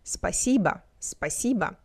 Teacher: The last vowel is pronounced as A because it's unstressed.